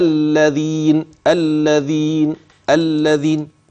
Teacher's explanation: تسمع هذه الذال تسمع طرف اللسان